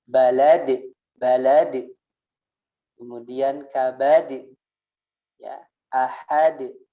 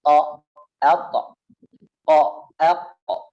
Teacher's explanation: qalqalah ada dua cara baca. Yang pertama adalah ke imalah e, gitu ya. Kemudian yang kedua ke tebal